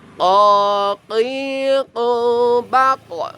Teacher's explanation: Huruf qaf ini ada huruf qalqalah. Jadi dia nanti apabila sukun dia memantul.